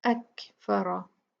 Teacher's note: अच्छा, ये अकफरा काफ जो है ये साकिन है, तो इसका जो हमस है, इसकी जो क्वालिटी है इसकी हवा की, वो हम जाहिर करेंगे